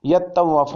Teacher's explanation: تا کا توئے میں ادغام کیا گیا کیونکہ یہ دونوں حروف ہم مخرج ہیں